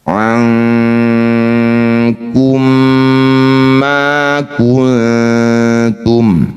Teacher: Mim sukun bertemu mim disebut bacaan idgham mimi atau idgham mitli. Bunyi mim pertama masukkan pada mim kedua. Di mim kedua dengungkan dua harakat.